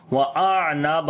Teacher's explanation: عین کے اوپر صفت توسط کریں گے. آواز کو کنٹینیو کریں گے. نون کو لمبا کریں گے.